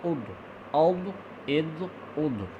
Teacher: یہ لفظ میں آپ نے کافی مشکل سے ادا کیا جائے گا، اس لفظ کو بھی فوکس کرنا ہے کیونکہ اس کا ضاد کا مخرج جو ہے وہ ہے زبانوں کی کروٹ جو ہے وہ اوپر آپ نے دانتوں کی جڑوں میں لگانی ہے.